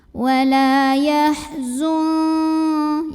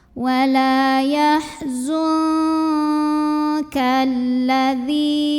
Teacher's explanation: Dan untuk huruf kaf ini dengungannya besar, jadi bunyi angnya paling gede. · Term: ikhfa ab'ad